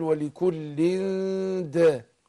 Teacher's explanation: عندنا الإخفاء هنا، نعم بنخفي نون التنوين عند الدال، حرف الدال.